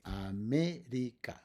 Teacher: And the stress is in me.